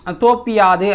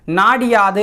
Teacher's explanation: குற்றியல் உகரத்தில் உள்ள உகரம் இகரமாக மாறும் அந்த இகரம் தனக்குரிய ஒரு மாத்திரை அளவிலிருந்து அரை மாத்திரை அளவா குறைந்து ஒலிக்கும் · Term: குற்றியல் இகரம்